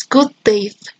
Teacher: Now the third realization is the non-audible release because because of the presence of another plosive, this first plosive is stopped at the moment of its realization